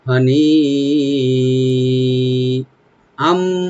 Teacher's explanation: নি এখানে মধ্যে মুত্তাসিল, চার আলিফ পর্যন্ত টানতে পারবেন